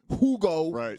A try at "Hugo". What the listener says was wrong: Hugo, there's no H. H, it's not pronounced. No, it's Ugo.